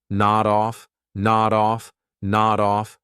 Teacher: Nod off is a phrasal verb, so we'll pronounce it as one word. Nod off. So notice I'll take that D sound and I'll connect it on the off, but I have to combine it together.